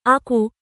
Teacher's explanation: এটি হল কাফ, যেমন আকু, তবে কু উচ্চারণটি সাধারণ ক এর মতো নয়, কিছুটা গম্ভীর হবে। জিহ্বার গোড়া এবং তার বরাবর উপরের তালু।